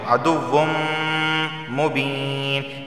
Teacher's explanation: تنوین کے بعد میم حروف یرملون کا آیا ہے تو ادغام اور غنہ دونوں ہوں گے، عدو مبین، یا سے پہلے زیر ایک الف کے برابر کھینچ کر پڑھا جائے گا۔